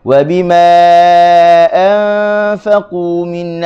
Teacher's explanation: huruf alif selepasnya ada hamzah, maka kita baca dengan panjang 4 harakat